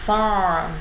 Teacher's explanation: mình đọc kết hợp cả nguyên âm và cong lưỡi của mình lên. Môi chu, má hóp, âm thanh đẩy sâu phía bên trong cổ họng.